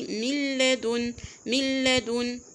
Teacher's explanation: لو خدنا المثال الاولاني من لدن، من لدن، ايه اللي حصل؟ دخلت النون في اللام، نطقت اللام التانية مشددة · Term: بغير غنة